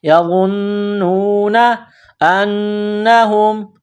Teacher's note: ساتھ ملانا ہے، نون کو واو کے ساتھ پلس کرنا ہے، نون میں غنہ کرنا ہے، آواز ناک میں چھپانی ہے